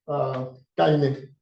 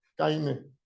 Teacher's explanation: in the Dominican Republic, caine. That R can turn into a vowel